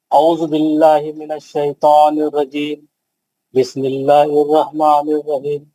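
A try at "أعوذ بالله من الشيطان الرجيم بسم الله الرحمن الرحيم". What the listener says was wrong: नहीं, सही नहीं है। खलखला नहीं करना, आवाज नहीं पलटाना, आवाज लंबी करके पढ़ना।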